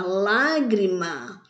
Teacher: a sílaba mais forte caiu na antepenúltima sílaba · A palavra lágrima tem 3 sílabas. E a sílaba mais forte é lá, que é última, penúltima, antepenúltima. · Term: proparoxítona